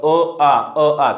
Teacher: तर अ आ च स्थान कंठामध्ये होतं बघा